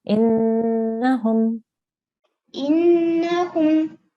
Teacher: So you should have some air in your nasal pipe when you're saying this. You can scrunch up your nose a little bit to really try and feel where the sound is coming from. · It's a noon with a shadda on the top, which makes it a noon gunna. So we have to hold the sound and make a nasal sound for about 2 seconds